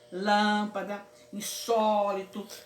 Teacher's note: E tem as palavras proparoxítonas, elas têm um acento na antepenúltima. A palavra mais forte é a antepenúltima.